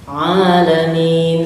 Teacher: Ya, jadi penekanannya sama, alamin di tengah-tengah sama ha, alamin, tetapi ada sifat dari pangkal hidung, ya, alamin sedikit sengau atau ngirung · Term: ain